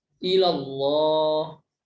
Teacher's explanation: yang dibaca tebal atau tafkhim karena diawali dengan fathah